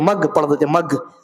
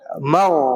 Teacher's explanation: گاف کی آواز وہاں پہ نکالتے، گاف کی آواز یا جی کی آواز نہیں نکلنی چاہیے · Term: غین کی آواز